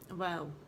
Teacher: دونوں ہونٹوں کو گول کر کے مکمل طور پر بند کیے بغیر، بیچ میں پینسل جتنا جو فاصلہ ہوگا نا وہ ہم چھوڑیں گے